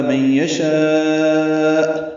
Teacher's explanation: اب یہاں پہ یشاء کے آخر میں یعنی الف مدہ کے بعد حمزہ آنے کی وجہ سے جو مد متصل بنی ہے اس پہ وقف ہو گیا تو ہم رک گئے. لمبا برابر کریں گے اور حمزہ ساکن جھٹکے سے پڑھیں گے